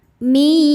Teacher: Cara bacanya bunyi nun sukun dileburkan ke ya, mi disertai bunyi dengung. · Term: idgham bi gunnah